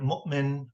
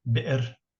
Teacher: Hamza is what we in English call a glottal stop.